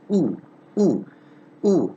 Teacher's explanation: articulated in the back centralized part so almost the back part of the vocal tract with the lips in that half closed position not fully closed but almost closed ooh ooh ooh and rounded